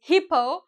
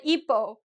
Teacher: Because we do not pronounce the H. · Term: Silent H